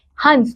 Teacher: अनुस्वार का उच्चारण करते समय वायु केवल नाक से निकलती है